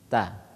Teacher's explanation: kalau umpama kita baca ta keluar dari ujung lidah ke pangkal gigi depan. Iya, pangkal ujung gigi seri depan pangkalnya.